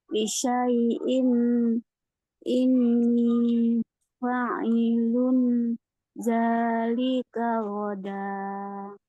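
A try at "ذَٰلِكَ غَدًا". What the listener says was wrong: Nah, godanya jangan panjang kali. Goda, udah sampai Paris dia panjangnya. 2 harakat aja. 2 harakat aja. Zalika goda. Jangan zalika goda. Sampai Paris dia panjangnya kalau begitu.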